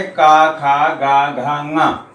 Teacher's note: आ कवर्ग, कवर्ग में कौन कौन से आ गए, का खा गा घा ङा, हा और विसर्ग, इनका उच्चारण स्थान क्या होता है, कंठ। इनका उच्चारण स्थान कंठ होता है